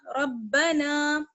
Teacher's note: اگر ربنا لک الحمد، را کو با سے ملائیں گے اور را کو موٹا پڑھیں گے. را با زبر رب، با زبر با، رب نون الف زبر نا، ربنا.